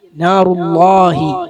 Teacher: അല്ലാഹ് എന്ന് പറയുമ്പോ ലാമിനെ തഫ്ഖീം ചെയ്യണം